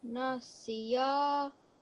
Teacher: We need to make sure that when we're saying it, we don't sound like we're joining the seen to the ya. It's not siya. It's just si and then ya.